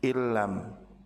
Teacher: Meleburnya huruf sukun pada huruf nun ke huruf berharakat setelahnya yaitu huruf lam. Sehingga dua huruf tersebut menjadi satu huruf yang ditasdid di huruf yang kedua sehingga berubah bacaannya menjadi illam. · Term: idgham